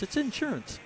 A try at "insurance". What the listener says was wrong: Insurance. No, but you're stressing the in. No, but the in, you're saying the in is more, you're stressing the in. It should just be insurance, not insurance.